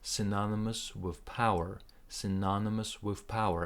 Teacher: this with is very short you barely can hear it